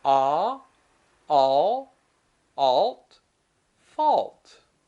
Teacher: au has the same pronunciation it's not ow it's ah like octopus